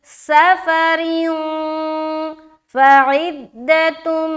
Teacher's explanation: आगे फिर फा आ गया दो ज़ेर की तनवीन के बाद, तो यहाँ पर फिर हम इख्फा करेंगे। तो क्या पढ़ेंगे, सफरिन फ़इद्दतुम, फ़इद्दतुम, फ़ ज़बर फ़, ऐन दाल ज़ेर इद, दाल ज़बर दा, ता मीम दो पेश तुम, फ़इद्दतुम।